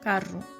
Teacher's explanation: e sua pronúncia é similar à pronúncia padrão do português europeu o som é produzido na ponta da língua na região alveolar o que que causa uma vibração E cria o som característico de R vibrante nas regiões em